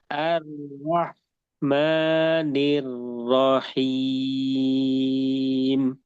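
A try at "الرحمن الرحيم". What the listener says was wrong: Ya, haknya masih kurang alir ya. Nanti dilatih untuk huruf haknya. Ar-Rahmanir-Rahim.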